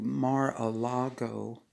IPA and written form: ˌmɑːrəˈlɑːɡoʊ (Mar-a-Lago)